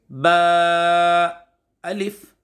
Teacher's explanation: बा दोनों होठों के तर वाले हिस्से से अदा करें